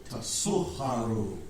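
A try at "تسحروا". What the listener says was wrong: Tasuharu. No, don't say kh. Somebody's making a kha sound.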